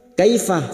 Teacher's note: Kaifa fathah bertemu ya sukun kita lunakkan